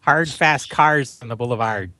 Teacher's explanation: for some people in Chicago it's a hard R